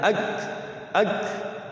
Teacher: Kaf itu dia hames, ada anginnya.